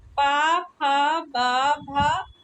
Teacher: प वर्ग की ध्वनियां कहां से उच्चारित होती हैं? ओष्ठ से।